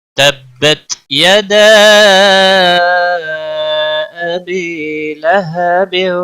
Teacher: लहबिन व तब, बा पर कलकला होगा, रुकने की सूरत में बा साकिन होगा, रुकने की सूरत में बा पर कलकला होगा